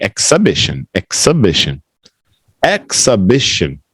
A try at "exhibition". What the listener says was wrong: Exhibition. Ek. This time it's an EK, not an IK. Exhibition.